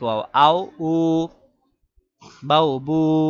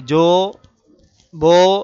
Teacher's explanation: ওয়াওয়ে মারুফ হলো স্বাভাবিক ওয়াও, আও, উ, বাও, বু, এগুলো হলো স্বাভাবিক। আর যদি বাও বো বলে, আও ও বলে, যাও জো বলে, তাহলে এই জো, বো এগুলো হলো ওয়াওয়ে মাজহুলের উচ্চারণ।